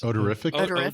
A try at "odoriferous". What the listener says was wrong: Odoriferous? the emphasis on the wrong syllable.